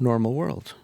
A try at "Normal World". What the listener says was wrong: Oh, he's putting the wrong emphasis on the... syllable.